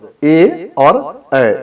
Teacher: कंठ और तालु से उच्चारण होने वाले शब्द ए और ऐ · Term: कंठ तालव्य